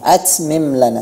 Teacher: pada kata atmim lana itu tidak ada sofir. Ya, tidak ada suara desis.